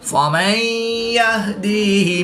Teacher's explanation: نون ساکن کے بعد یا حروف ارملون میں سے ہے تو یہاں پر ادغام مع الغنہ ہوگا، یعنی غنہ کر کے پڑھیں گے